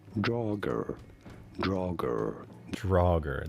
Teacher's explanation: I cannot replicate that voice he has so much vocal fry going on